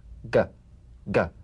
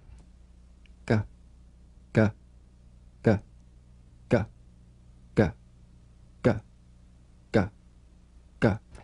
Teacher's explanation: place the back of the tongue in gentle contact with the soft palate let the tongue spring away play this drum beat on the springing action of the back · back of the mouth without tightening pressing or pushing gah gah you'll feel a crisp tap and a voiced pulsation of the back of the tongue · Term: voiced tongue back plosive consonant, voiced tongue back plosive